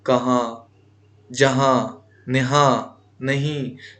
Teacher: نون کی آواز چھپ جاتی ہے، ناک میں چلی جاتی ہے، ظاہر نہیں ہو پاتی ہے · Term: نون غنہ